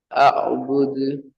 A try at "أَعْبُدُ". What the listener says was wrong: என்கிறது பிழை. அந்த ஐன் கலக்கக்கூடாது. பிழை.